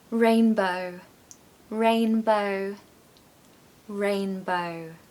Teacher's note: the reason it's sometimes called the long o is that you need to take your time on this sound okay don't rush it because if you say it too quickly